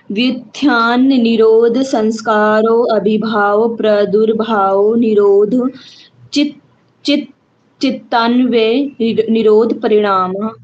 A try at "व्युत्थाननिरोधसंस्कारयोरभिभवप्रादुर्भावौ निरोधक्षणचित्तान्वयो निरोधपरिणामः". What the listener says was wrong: हाँ, एक तो इसने आपने चित्त से पहले क्षण था वो स्किप कर गए। फिर से बोलना है, व्युत्थान निरोध संस्कारयोर्भिभव, या अभिभव नहीं बोलना है। व्युत्थान निरोध संस्कारयोर्भिभव प्रादुर्भावो निरोध क्षण चित्तान्वयो निरोध परिणामः।